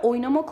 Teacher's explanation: oyun kelimesine Ben A harfini Getirirsem arkadaşlar oynamak olur ve buradaki arkadaşlar u harfi düşer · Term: düşen ünlü